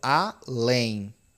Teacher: Eu tenho uma oxítona, né? Porque o peso tá na última